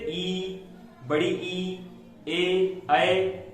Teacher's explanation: अवृत्ताकार जिनमें होठों की आकृति वृत्त के समान ना हो